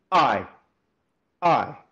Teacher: it's the pressing together of the vocal folds and then allowing them to pop open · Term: glottal attack